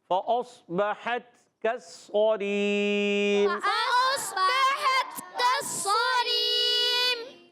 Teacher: میم پر وقف کریں گے تو یہاں ہو جائے گا مد عارض۔